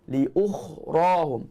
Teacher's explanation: Tebal dan berangin ketika sebut huruf kha.